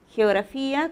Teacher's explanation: como te has dado cuenta primero es la fricativa velar